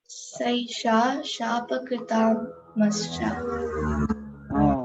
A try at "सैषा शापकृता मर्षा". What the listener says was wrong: Not Shapakrita. Shapakrita. Here it is a vowel. Kr is a vowel on the consonant ka. Not uk, r, u. It is kr.